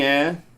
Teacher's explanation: if you come from up North maybe you can drop the h